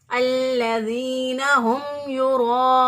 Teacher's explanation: پہلے واو موجود ہے تو اس واو کو میکسیمم 5 سے 6 الف کے برابر لمبا کر کے پڑھ سکتے ہیں